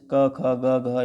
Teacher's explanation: क वर्ग के जितने हैं वो सब कंठ से